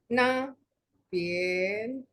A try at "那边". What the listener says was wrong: Oh, tetap naik nada 2. Oke, nah, pien. Nah, pien. jangan naik, Bu. Nah, pien. Iya, masih naik ya, Bu. Ya, nada 1. Jadi tidak naik. Nadanya datar ya.